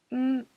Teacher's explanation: the air comes out of your nose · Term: N sound